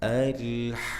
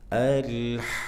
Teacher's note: Enam harakat. Kemudian ada nabr atau penekanan ketika beranjak dari mad ke huruf bertasydidnya seperti di ayun ya.